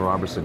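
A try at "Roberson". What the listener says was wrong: That's Robertson, no T. There's no T in Robertson.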